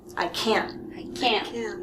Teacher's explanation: negative you're cutting the sound here i can't i can't yes it's very nasal through the nose and we cut the sound off in our throat there